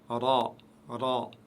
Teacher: Attention à ne pas rouler les R avec cette lettre.